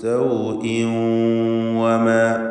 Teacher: സൗഇൻ എന്നതിലെ തൻവീൻ ഇദ്ഗാം ബിഗുന്ന ചെയ്ത് വാവിലേക്ക് ലയിപ്പിച്ച് മണിക്കണം.